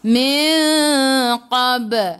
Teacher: Ba qalqalah surah, lantunannya kecil